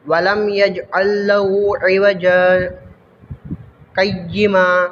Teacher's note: سقطہ والی جگہ پر تھوڑی دیر آواز بند کی جاتی ہے، سانس نہیں توڑا جاتا